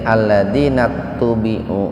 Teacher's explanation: Hamzah wasol itu akan hilang ketika di tengah-tengah pembicaraan.